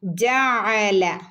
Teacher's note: ഇവിടെ ജാ ഐന് പറയുമ്പോൾ പ്രത്യേകം ശ്രദ്ധിക്കണം കേട്ടോ. തൊണ്ടേൻ്റെ നടുക്ക് വരുന്ന അക്ഷരമാണ്.